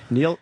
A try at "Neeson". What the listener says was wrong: It's Neeson. Neeson. There's no L at all. Neeson. Liam Neeson.